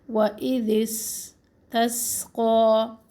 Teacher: زبان کی نوک جب نیچے والے دانتوں کے اندرونی کنارہ سے لگتی ہے تو سین ادا ہوتا ہے